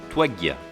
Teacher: The consonant is longer and produced using more energy. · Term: Verschärfung